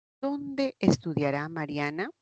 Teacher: Eso también es hacia abajo. Se marca la pregunta con el pronombre más no con la inflexión de voz. es descendente. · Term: interrogativas parciales o pronominales